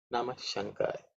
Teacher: as air is being released and left, the next word takes over, so that air merges into the sha. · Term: Visarga changing into the Sha